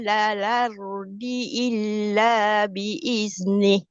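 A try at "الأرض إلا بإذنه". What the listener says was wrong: Ha huruf dal repair lagi. Cantikkan sikit.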